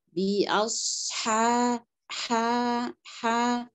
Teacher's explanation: Huruf ha dia punya sifat hamas. Diucapkan dengan nafas yang agak kuat ya. Dipersiapkan nafasnya dengan jelas supaya pengucapan hurufnya jelas maksudnya.